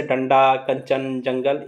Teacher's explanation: अनुस्वार के उच्चारण में वायु किससे निकलती है? नाक से निकलती है